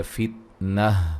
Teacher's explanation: فتنہ وقفاً گول تا کو ہائے ساکنہ میں تبدیل کر دیں گے